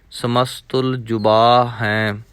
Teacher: ਜੁਬਾ ਥੋੜ੍ਹਾ ਜਿਹਾ ਬੱਬੇ ਨੂੰ ਕੰਨਾ ਲਮਕਾ ਕੇ ਪੜ੍ਹਨਾ ਹੈ।